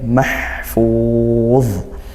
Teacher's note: ha sukunnya disempurnakan, ditempatkan di makhrajnya ha, yaitu tengah tenggorokan, dan desiskan, alirkan suaranya desis